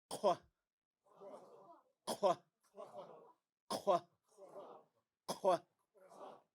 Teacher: It's like a K, but you make it in the back of your throat